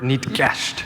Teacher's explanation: that ke sound you hear is what's called an ejective consonant